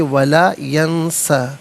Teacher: ناظرین یہاں پر ولا ینسا وقف کریں گے تو سین پر ویسے زبر ہے لیکن وقف کریں گے تو پھر تھوڑا سا ایک الف کی مقدار کھینچ کر پڑھیں گے